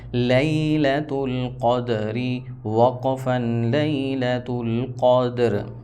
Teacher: قاف دال زبر قد، قاف اور دال حروف قلقلہ میں سے ہے، اس وجہ سے یہاں پر ہم نے ہلا کر پڑھنا ہے حرکت دے کر